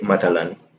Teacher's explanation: tha in Amiya becomes one of two sounds. It can become ta, or it can even become sa.